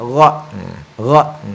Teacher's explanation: sifat huruf gha itu adalah bunyi di tenggorokan atas